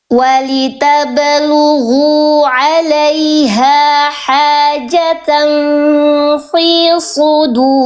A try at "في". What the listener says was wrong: Fa-nya jangan jadi tebal. Jangan kayak agak tebal tadi fa-nya. Fi. Hajatan fi.